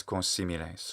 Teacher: when there's an N in front of an S, they usually pronounce it with a kind of nasalization